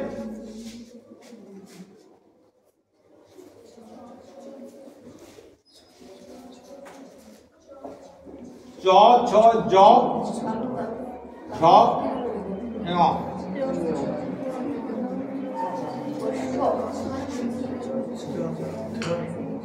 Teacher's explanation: জীব কোথায় স্পর্শ করছে? জীব স্পর্শ করছে তালুকে।